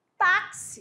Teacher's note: Esse X que aparece na palavra táxi tem um som de KS. Alguns falam que é CS, mas não tem problema.